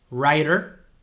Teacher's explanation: veis que esa primera W no se pronuncia